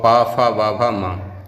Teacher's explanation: उ प फ व भ म और उपदमानी, इनका उच्चारण स्थान ओष्ठ हो जाएगा